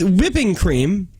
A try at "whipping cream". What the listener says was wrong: I don't like how you said that. You said it just too many P's. The whipping. You're whipping in. Whipping. That's how you pronounce it. It's how normal